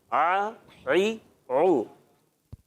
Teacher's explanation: عین حلق کے درمیان والے حصے سے ادا ہوتا ہے, مگر آپ زور دیں گے تو ادا ہوگا.